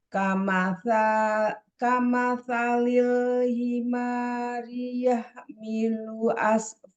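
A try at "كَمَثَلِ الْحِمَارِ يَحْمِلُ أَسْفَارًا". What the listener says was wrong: Alhamdulillah bagus. Lanjut.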